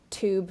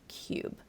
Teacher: the difference there is /uː/ oo versus /juː/ yoo.